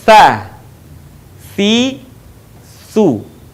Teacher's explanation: menyentuhkan ujung lidah kita dengan dinding dua gigi seri bagian atas kemudian diucapkan dengan mengalirkan suara dan nafas kita dengan lembut